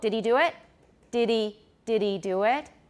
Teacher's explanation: 没有重音的时候，那个 h 常常没有念